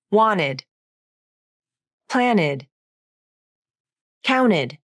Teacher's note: When N and T are next to each other, between vowels, and the second vowel is unstressed, the T can be dropped from the pronunciation. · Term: nasal flap